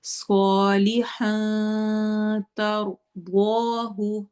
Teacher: اور آگے جو اس کا ہن میں نون آ رہا ہے یہ نون کلیئر نہیں پڑھنا، اس کو ہم نے چھپا دینا ہے